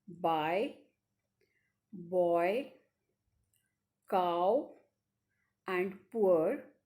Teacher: there is a perceptible change in the quality of the vowel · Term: diphthongs